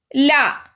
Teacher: நாவின் இரு பக்கங்கள் தடித்து மேல் பற்களின் அடியை தொடுவதால் லகரம் தோன்றும். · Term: வகர லகரம்